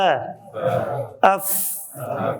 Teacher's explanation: ثنایا عُلیا کے کناروں کو نچلے ہونٹ کے تری والے حصے سے ملا کر ف ادا ہوتا ہے